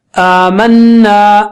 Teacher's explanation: صرف غنہ ناک سے نکلے گا, آ نہیں · آ کی آواز ناک سے نہیں نکلنا, آمنا نہیں ہونا چاہیے, ناک سے نہیں.